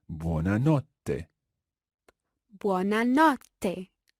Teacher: with that double T sound in there, try to bounce on it.